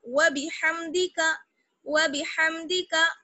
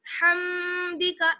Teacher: میم کو جلدی سے پڑھیں گے, میم پر ٹھہرنا نہیں ہے ہمیں بلکہ صاف طور پر ہم میم کو پڑھیں گے